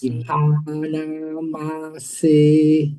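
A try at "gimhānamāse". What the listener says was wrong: Gimha, long A, gimha. Yes, you go long HA, gimhanamase, gimhanamase. So that's how you should go. Gimhanamase.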